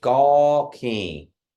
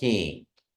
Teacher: you don't say the entire n because that indicates the nasalization so you're you're almost saying it in but you're just nasalized